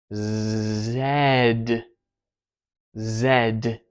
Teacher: So you're going to be squeezing the S, but phonating. An S is the same as a Z in mouth position. Just for the Z, you phonate.